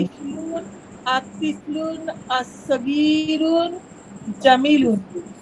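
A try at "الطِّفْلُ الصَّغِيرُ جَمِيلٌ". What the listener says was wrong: আতিফলু as-সাগীরু, এটাকে একই সাথে বলতে হবে আতিফলু সগীরু সগীরু হবে, কারণ ওই যে আলিফ লাম এসেছে, তখন তানবিন হবে না।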